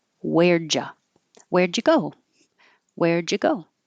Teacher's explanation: is perfect but you can make a contraction where and now the D and the Y make a j and change U to Y